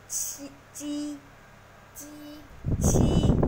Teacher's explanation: phần mặt lưỡi đưa lên phía trước của ngạc cứng